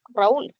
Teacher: cuando está a inicio de palabra, tiene el sonido de la vibrante múltiple, pero la escribes con una sola R.